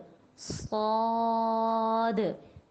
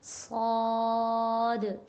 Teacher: سیٹی کی آواز اس میں پیدا کرنی ہے، لیکن اس کو موٹا بھی پڑھنا ہے. لیکن اس کے اندر یہ ہے کہ ہونٹوں کو گول نہیں کرنا، ہونٹوں کو سیدھا رکھتے ہوئے صاد. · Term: سیٹی والے حروف